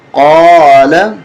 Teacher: قاف کو موٹا کریں